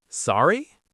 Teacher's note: You say it with a rising tone to show that you didn't hear or didn't understand.